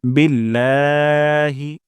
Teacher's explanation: লাতে আমরা এখানে এক আলিফ পরিমাণ টান দিব